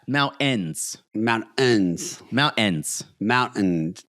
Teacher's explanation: There's no T in it anymore. There is not. The T has been eliminated.